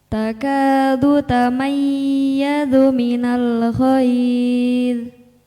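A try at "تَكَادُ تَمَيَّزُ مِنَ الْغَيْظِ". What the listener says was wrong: Lamnya mantul apa enggak? Enggak boleh mantul. Enggak boleh mantul lamnya.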